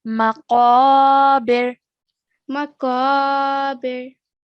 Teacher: Try and make that qaf sound, thick, heavy sound